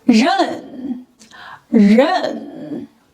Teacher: tip of the tongue is raised and approaches the front of the hard palate. The sides of the tongue need to curl up. When combined with the compound final n and giving the full tone, we get the pronunciation 认.